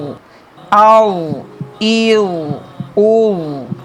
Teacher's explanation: وا حروف مستعلیہ میں سے ہے، اسے ہم لوگ ٹھیک یعنی کہ موٹا ریڈ کریں گے. وا میں قلقلہ نہیں ہوگا. حمزہ وا زبر آو، حمزہ وا زیر ایو، حمزہ وا پیش او، آو ایو او.